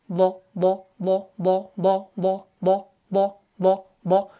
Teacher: اس کے بعد ہے ضاد۔ ضاد جو ہے یہ حرف حافیہ ہے اور مشکل ترین حرف مانا جاتا ہے، تو یہ بھی موٹا ہے